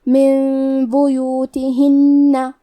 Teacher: با حروف القلب میں سے ہے، قلب کا معنی ہے بدل دینا، تو ہم نون ساکن کو ہلکی میم میں بدل کے اور غنہ کے ساتھ یہ حکم کو ادا کریں گے۔ من بیوتہن، کلمت بیوتہن میں با پہ اور یا پہ پیش ہے تو ہم یہ دونوں پیش کو برابر سے ادا کریں گے، آخری میں نون کی تشدید کو غنہ کے ساتھ ادا کریں گے۔